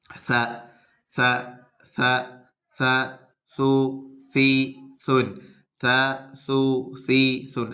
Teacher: ഈ മുൻപല്ലിൻ്റെ തലഭാഗം ടച്ച് ചെയ്യുക. അപ്പോൾ കാറ്റിങ്ങനെ ചെറിയ കാറ്റ് പുറത്തേക്ക് വരും. അങ്ങനെ ഒരിക്കലും നാവ് എന്ത് ചെയ്യരുത്, പല്ലിനെ പുറത്തേക്ക് ചാടരുത്, പല്ലിനെ മുകളിൽ കയറ്റി വെക്കരുത്, ഒന്നും ചെയ്യരുത്.